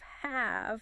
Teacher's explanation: Your bottom lip touches your top teeth and the sound just cuts off.